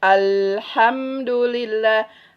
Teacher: Nah, jadi si aliran suaranya itu mengalir ke pinggir. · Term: huruf lam